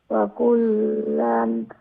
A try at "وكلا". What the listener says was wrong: وكلا إخفاء করতে হবে না তানবিন